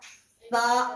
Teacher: دونوں دانت کے بیچ میں زبان کا اگلا حصہ تھوڑا سا رکھ دیں گے اس طرح، تو آپ کا سا ادا ہو جائے گا۔